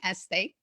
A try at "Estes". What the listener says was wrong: There's an S on the end.